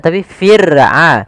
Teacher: ada huruf ra yang didahului dengan huruf kasrah, maka ra-nya tipis, tidak boleh dibaca fir, tidak, tapi fir'auna, ra-nya tipis. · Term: ra tarqiq